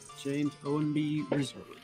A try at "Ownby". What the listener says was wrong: Ownby, not Ownby. Yeah. Ownby. It's one word. It's not two. Ownby. Repeat after me. Own. Own. Ownby. Ownby.